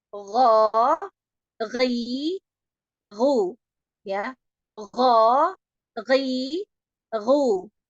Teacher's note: Dia ini adnal halqi ini atau ujung tenggorokan ini tepatnya itu adanya di akar lidah yang bertemu dengan langit-langit yang lembek.